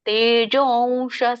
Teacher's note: ಅಲ್ಲಿ ಅವಗ್ರಹ ಇದೆ ಅ ಲೋಪ ಆಗುತ್ತೆ ಹಾಗಾಗಿ ನೀವು ದೀರ್ಘ ಎಳಿಬೇಕು